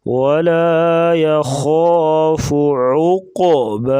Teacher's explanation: قاف کو موٹا کریں گے، قلقلہ بھی کریں گے